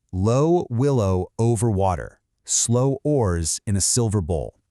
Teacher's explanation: soft consonants like n, l, and w, mixed together with long, stretching vowels. It sounds like a lullaby.